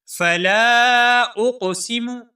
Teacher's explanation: قاف حروف قلقلہ میں سے ہے، یہاں پر تھوڑی سی جنبش پیدا کر کے پڑھیں گے